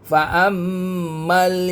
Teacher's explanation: faamma mim sabdu ada dengungnya dua harakat